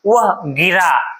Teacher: फिर कहते हैं कि वह गिरा, रा पे ज्यादा जोर दे रहे हैं। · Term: बलाघात